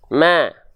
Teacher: kalau kita senyumkan sedikit ma dia akan terdengar lebih tipis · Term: huruf tipis